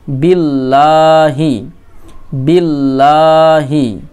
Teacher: লামের উপর তাসদিদ আছে, এই জন্য বায়ের সঙ্গে লামের ইদগম হবে।